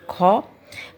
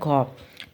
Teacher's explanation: এছাড়া যেটা হচ্ছে আমরা পাই মহাপ্রাণ ধ্বনি ক, খ এবং ঘ, মানে প্রতিবর্গের তৃতীয় এবং চতুর্থ, মানে প্রাণ মানে নিঃশ্বাস, ঠিক আছে, অনেক বেশি নিঃশ্বাস নিয়ে উচ্চারিত হয় এবং হ যুক্ত হয়, কযুক্ত হ থেকে উচ্চারিত হয় খ, গ যুক্ত হ উচ্চারিত হয় ঘ, ঠিক আছে।